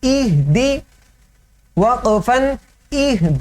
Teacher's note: दी ज़ेर है, तो पूरी बारीक पढ़नी है, हल्की सी भी इसको पुर की तरफ, मोटाई की तरफ या मजहूल की तरफ नहीं लेके जाना। इह दी वक़फ़न इहद اہد دال حروف قلقلہ میں سے یہاں پر قلقلہ کرنا ہے.